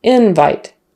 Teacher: the stress is on the first syllable for the noun invite